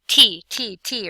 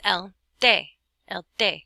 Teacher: like a d is definitely not like a tea and again your tongue touches the back of your front teeth and there's no puff of air